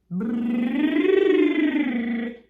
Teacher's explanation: with B, we're starting the vibration of the vocal cords as the sound begins. So when you do, phonation begins at the very start. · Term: voiced